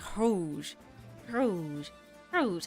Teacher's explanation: I think I'm defaulting back to the French, like, guttural R.